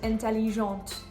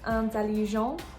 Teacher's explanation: When you have the E at the end of intelligent, then you can actually hear the T.